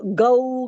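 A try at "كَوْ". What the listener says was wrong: گاف نہیں ہے، کو ہے. گاف کہاں ہے قرآن میں؟ زبر ہے، اس کے اوپر گاف ہے نہیں قرآن میں. اردو تھوڑی ہے. काफ नहीं, कऊ, काफ कऊ।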